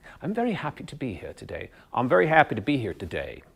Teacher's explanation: comes down softly at the end of the line